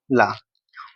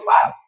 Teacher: पार्श्विक का मतलब क्या है, पार्श्विक का मतलब होता है जब हम ला का उच्चारण करते हैं तो वायु जो है ना जीभ के दोनों साइडों से निकल के गुजरती है, वो मतलब होता है पार्श्विक। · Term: पार्श्विक व्यंजन